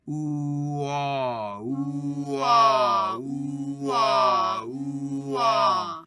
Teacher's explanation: We'll go from ooh, where again the lips are rounded forward, into aw, where the jaw will drop a bit.